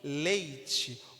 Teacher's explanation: o E vai sair mais forte que o I. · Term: decrescente